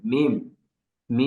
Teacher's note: প্রথমে দুই ঠোট লাগবে এই দুই ঠোট লেগে উচ্চারণের আগে একটা গুন্নার মত হবে